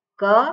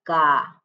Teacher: સ્વર જે છે એમાં ઉમેરવામાં આવે એટલે એકમાત્રા થઈ કહેવાય એટલે ક બોલું ત્યારે એક માત્રા એકમાત્રા એટલે સમય સમયનું એક માપ પણ જ્યારે કા બોલું તો ત્યાં બે માત્રા થઈ ગઈ દીર્ઘ થયો એટલે કા એટલે ક કા એવું ના બોલાય ક કા ક